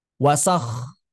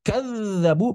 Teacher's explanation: Wasakh, pita suara tidak bergetar, kadzabu, pita suara bergetar.